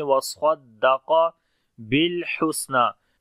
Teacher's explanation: स्वाद को मोटा पढ़ेंगे, क़ाफ को भी मोटा पढ़ेंगे